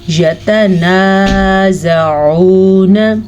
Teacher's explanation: یتنازعون فیہا، اب آپ نے دھیان دیا یا اور تا کی مقدار کم ہے، جبکہ نون کے بعد الف مدہ کی وجہ سے ہم نے اس کو کھینچ کے پڑھنا ہے